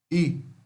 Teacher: Fonema I, como em ear, né? Ó, é uma vogal I fechada, frontal